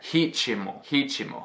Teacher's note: It's spelled R-I-T-M-O, but you pronounce this imaginary or epenthetic vowel as if there were an I there